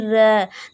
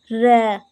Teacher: जब हम बोलते हैं तो हमारा जो जीभ है वो जल्दी-जल्दी गिरे एक दो बार जल्दी से गिरे कंपन करे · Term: लुंठित या क्रम्पित व्यंजन